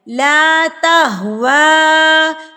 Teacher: اب کھڑی زبر اور مد جو ہے یہ اکٹھے آ گئے تو اس کو ہم نے 6 حرکات کے برابر کھینچنا ہے